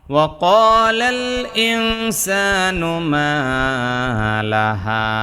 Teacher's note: মা, মা এক আলিফ টান, জবরের পরে আলিফ, লাহা, লাহা জবরের পরে আলিফ, এক আলিফ টান।